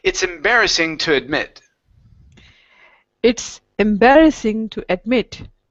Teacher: admit with the stress on the end